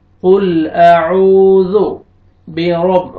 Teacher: را کو مرفتح ہے، را کو موٹا کر کے پڑھیں